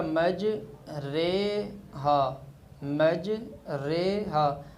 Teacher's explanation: را زیر ری بھی پورا نہیں ہوا اور را زبر را بھی پورا نہیں ہوا، یعنی دونوں کا جھکاؤ ایک دوسرے کی طرف جب ہوا ہے تو را زیر رے بن گیا ہے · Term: امالہ